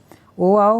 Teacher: ओ आओ कंठोष्ठ से बोला जाता है।